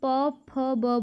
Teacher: प फ बोलने में क्या हो रहा है, हमारे होंठ आपस में मिल रहे हैं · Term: ओष्ठ व्यंजन